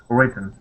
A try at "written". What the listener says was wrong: Okay, so we're going to hide those T's. It's more of a sound that we make in the back of our throat.